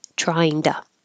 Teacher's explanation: You don't have to say to, and this T changes to a D.